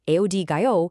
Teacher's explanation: If I use a flat totally even tone and say aodo, my voice just stays level. That's a statement.